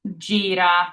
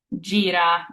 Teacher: So with our G or double G, we have, once again, two different sounds depending on our vowel following the G. So if our G is followed by an I or an E, it's a J sound, like jam in English.